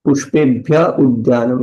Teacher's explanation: The visarga gets dropped.